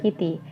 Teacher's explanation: the voiceless alveolar stop consonant phoneme T is pronounced as a voice alveolar flap R, like in the word kitty. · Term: flapping